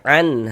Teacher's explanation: Bunyi nun sukunnya kita baca jelas an. Kemudian tidak didengungkan baca pendek saja